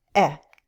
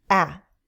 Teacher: The short E sound is more closed, eh. The short A sound is more open, ah. Our jaw lowers